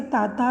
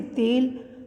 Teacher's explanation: हिंदी की अल्प प्राण अघोष स्पर्श दंत्य ध्वनि